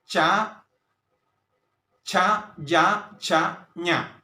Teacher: ഇനി നമുക്ക് അടുത്തത് താലവ്യം താലവ്യം എന്ന് വെച്ചാൽ അണ്ണാക്ക് അണ്ണാക്കില് താലുവില് അതായത് അണ്ണാക്കിൽ നിന്ന് സ്പർശിച്ച് നാക്കിന്റെ സ്പർശത്താൽ രൂപീകരിക്കുന്ന അക്ഷരങ്ങളെ താലവ്യം എന്ന് പറയുന്നു